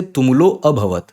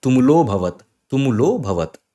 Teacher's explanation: So when you have this avagrah sign, no, you don't pronounce a because that a becomes hidden.